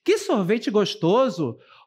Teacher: essa entonação traz uma conotação positiva é uma entonação que vem num tom crescente e que expressa aí algo que você está gostando expressa alegria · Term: frase exclamativa